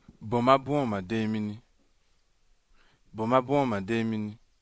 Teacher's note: Demini. There is a high tone on this. On the last vowel. On the last vowel for both of them.